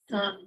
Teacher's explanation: Now, for low tone, in isolation form, it sounds quite breathy.